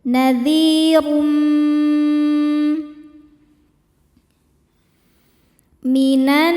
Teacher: Karena ada tanwin dhammah menghadapi huruf mim. Cara bacanya tanwin ini dimasukkan ke mim disertai dengung. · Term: idgham bidunah, idgham bi gunnah